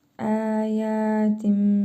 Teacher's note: Mim hərfi kimi tələffüz edirik tənvindəki nun hərfini. Əyətim və mim hərfini burnumuzda tələffüz edərək bir əlif miqdarı uzadırıq.